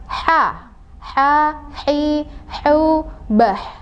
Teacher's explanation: Nah, berasa di tengah tenggorokan.